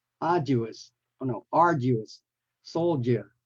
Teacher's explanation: the D's pronounced as a j